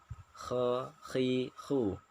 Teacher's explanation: kha itu ada sedikit getaran ya, ada sedikit serak-serak sedikit. Tapi tidak boleh berlebihan, misalnya kha itu berlebihan. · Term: huruf kha